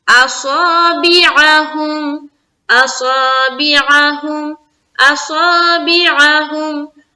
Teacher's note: صاد کو منہ بھر کر الف مدہ کے ساتھ بولیں گے. اصابعہم بیعہم, بازر بھی عین زبر ع, بیعہ ہا میم پیش ہوں, بیعہم.